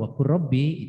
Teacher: Tapi kalau waqur rabbi itu masuk pada idgham. Ya, dalam tulisannya waqul, tapi dalam bacanya waqur. Jadi di sini adalah dua huruf yang makhrajnya berdekatan, tetapi sifatnya berbeda.